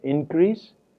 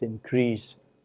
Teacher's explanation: it is the first syllable which is stressed if the word is noun as an increase and the second syllable is stressed if the word is a verb